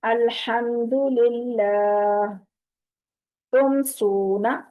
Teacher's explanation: जैसे मिसालें हैं अलहम, इसको अल्हम्दुलिल्लाह नहीं पढ़ना, मीम की आवाज को अब जाहिर करना है, क्योंकि इससे आगे ना बा है और ना ही आगे मीम है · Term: इजहार शफ़वी